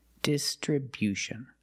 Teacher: distribution with a stress on a first and third syllable.